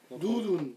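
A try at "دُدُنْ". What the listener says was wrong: Voilà, doudoun, très bien.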